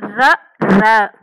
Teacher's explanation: மேல் அன்னத்தின் முதல் பகுதியை தொட்டு வருடுவதால் ர ரகரம் தோன்றும் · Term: இடையின ரகரம்